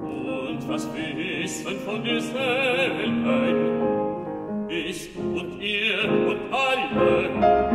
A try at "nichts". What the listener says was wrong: And longer vowel, nichts, nichts,